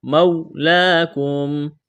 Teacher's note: واو لین ہے، اس کو کھینچنا نہیں ہے، کڑا زبر ہے، کھینچنا ہے الف کے برابر۔